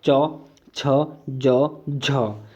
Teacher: च वर्ग का जो उच्चारण हमारा स्थान है ये तालु से है